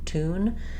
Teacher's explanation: I'm not saying tune in American English. There's no y sound in it.